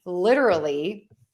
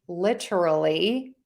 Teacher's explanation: You can say litter with the D sound, the flap T